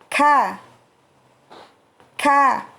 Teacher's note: Kalau qaf tidak disertai udara, sedangkan kaf disertai dengan udara atau nafas. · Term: huruf kaf